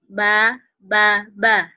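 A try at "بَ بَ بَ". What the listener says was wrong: Ba, ba, ba. Jangan ada hanya ya, jangan bah, bah, bah. Ba, ba, ba.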